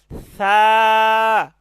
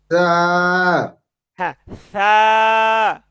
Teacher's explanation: হ্যাঁ, সা, তো আমরা সাটা নরম করে পড়বো। সা, জিহ্বার আগে হালকা একটু কামড় দিয়ে বলবো